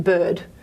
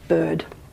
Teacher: So technically this is a low mid unrounded central vowel.